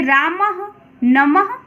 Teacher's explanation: विसर्ग उच्चारण के समय इसकी ध्वनि ह के रूप में निकलती है।